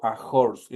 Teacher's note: horse es una H aspirada y por lo tanto es como que ahí estuviera una J.